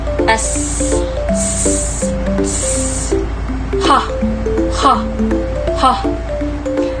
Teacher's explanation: ang hanging lumalabas ay nagdaraan sa makipot na pagitan ng dila at ng ngala-ngala